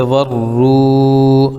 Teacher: واو ساکن سے پہلے را پر پیش ہے اس لیے واو مدہ ہوگا، ان کو تھوڑا کھینچ کر پڑھیں